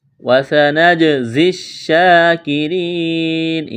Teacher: کاف کو باریک کرنا ہے، را کو باریک کرنا ہے، یا مدہ ہے، ایک الف کے برابر کھینچنا ہے. وقف کریں گے، نون کو ساکن کریں گے.